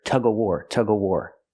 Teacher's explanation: sometimes people don't pronounce the v in of, and you'll hear tug of war, tug of war.